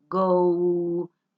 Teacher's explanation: Sonoro es cuando usted, por ejemplo, dice go, como el verbo ir, go, miren, esa O, go. Si usted se toca las cuerdas vocales, suenan sus cuerdas vocales, vibran. Quiere decir que el sonido es sonoro, no es sordo.